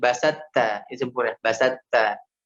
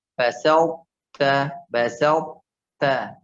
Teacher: Karena dia idgham naqis, dia kurang, maka po-nya tidak disempurnakan masuk ke huruf ta, melainkan dibaca setengahnya.